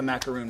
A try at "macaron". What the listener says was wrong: Macaron. Now, it's macaron. So Disney blog actually has a wonderful little cheat sheet on that, so you can know how to pronounce them, because one has 1 O and one has 2 O's.